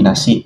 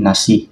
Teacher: mempunyai konsonan glotal di hujung kata berbanding nasi dalam bahasa Melayu standard yang diakhiri vokal terbuka